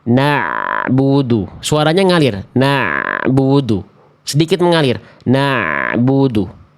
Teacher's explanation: pastikan ain sukun teman-teman dilafalkannya dari tengah tenggorokan dan sedikit mengalir suara antara e dengan bu.